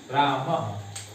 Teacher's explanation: जैसे राम के बाद हम विसर्ग लगाते हैं, इसे पढ़ते हैं रामः। तो इस विसर्ग का जो उच्चारण स्थान होता है वह कंठ होता है। अकुहक विसर्जनीयानाम कंठा, अर्थात विसर्ग जो है कंठ से उच्चारित होता है।